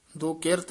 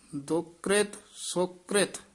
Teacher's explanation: ਦੁਕ੍ਰਿਤ ਇਕੱਠਾ ਹੀ ਪਾਠ ਬੋਲਣਾ ਦੁਕਿਰਤ ਨਹੀਂ ਬੋਲਣਾ